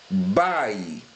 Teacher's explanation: Eu vou ter a primeira vogal do ditongo, tá? Com uma pronúncia mais forte. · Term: ditongo decrescente